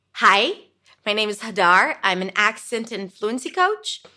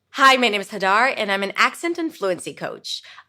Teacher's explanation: When I go up, it feels like I'm asking for your permission. And when I go down, it's like I know what I'm talking about. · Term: upspeak